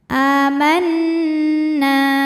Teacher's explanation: Hamzah yang dipanjangkan dibaca panjang dua harakat aman nunnya gunah musyadadah karena Nun bertasdid maka dibacanya dengung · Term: gunnah musyaddadah